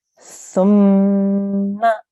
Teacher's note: I did not elongate the ma sound because we have a simple fatha on top. That's 1 second.